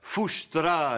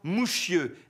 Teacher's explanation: charabia a désigné le patois auvergnat, à cause de la prononciation palatalisée du S qui sonnait comme un che